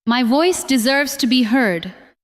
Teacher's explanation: This time, do not make every word equally strong. Stress voice, deserves, and heard.